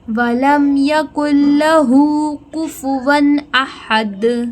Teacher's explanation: یہ بڑا خوبصورت طریقے سے احد ہے، حلق سے نکلنے والا ہا ہے، احد۔ قلقلہ کریں گے دال کے اوپر